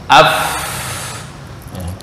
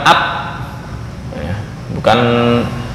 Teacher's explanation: Nah, untuk fa gambarnya antara ujung gigi seri atas dengan bibir bawah agak ke dalam. Af, bukan ap, bukan juga up.